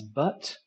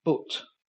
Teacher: in the north they don't actually have this vowel at all in the north they would use the O vowel